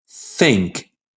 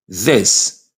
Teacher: Put your hand on your throat. Say, think. No buzz. Now say, this. Buzz.